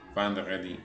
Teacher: Se nasaliza la E, la E, porque está la N siguiente.